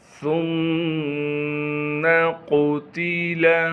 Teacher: سا کو میم مشدد سے ملائیں گے غنہ کے ساتھ کیونکہ میم پر تشدید ہونے کی وجہ سے غنہ کیا جائے گا۔ قاف کو موٹا کر کے پڑھیں گے، تا کو بھی باریک کر کے پڑھنا ہے۔